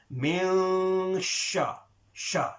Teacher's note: So here, whilst the ghunna is going on, min, this bit here, min, our tongue, we should be going close to the makhrij of the letter sheen. And remember, sheen comes from the middle of the tongue.